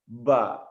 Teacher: Ba bisa kita lihat dia pertemuan antara dua belah bibir, atas dengan bawah